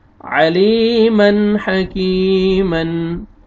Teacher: یا مد ہے، یا جزم سے پہلے زیر ہے، آپ نے لام کو کھینچنا ہے · جزم سے پہلے زیر ہے، آپ نے لام کو کھینچنا ہے، آگے تنوین کے بعد حروف حلقی میں سے ہا آ رہا ہے، یہاں پہ آپ نے اظہار کرنا ہے، جلدی پڑھیں گے ، آگے پھر یا مد آ رہا ہے، یا جزم سے